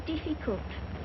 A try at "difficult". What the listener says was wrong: Diff. Not deaf. The word is difficult.